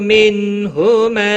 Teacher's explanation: نون ساکن کے بعد حروف حلقی میں سے ہا آیا ہے، اظہار حلقی ہوگا